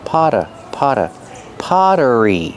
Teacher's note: the Double T makes a fast D sound because it's between vowels